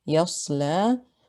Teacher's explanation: Sad here has a sukun and it's preceded by a fatha. It is a heavy letter, so it is heavy on the second scale.